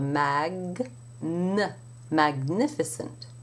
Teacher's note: when an English speaker sees the G in front of the N the tendency is to pronounce the G separately from the N so you would have for example in the word magnificent you